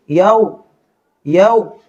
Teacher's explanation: گے قلوبن، یا کے اوپر زبر یا اور آگے واو ساکن، زبر کے بعد واو ساکن ہو تو یہ واو لین ہوا کرتا ہے۔ یہاں اب اس واو کو نرمی کے ساتھ پڑھیں گے